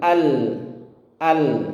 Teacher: Jadi huruf lam sukun itu bukan huruf Qalqalah jadi tidak perlu dipantulkan